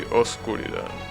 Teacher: However, as time passed, that B in between the O and the S got lifted, and now you should say oscuridad without pronouncing the B